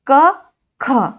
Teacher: क, ख, हाँ, यही हमारी कंठ ध्वनि है, क्योंकि इसे कंठ से हम बोल रहे हैं